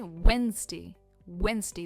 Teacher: Wednesday, the D is silent.